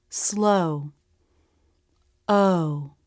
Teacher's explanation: as they prepare to round for the ending position rounded lips in a stressed syllable the O diff thong curves up then down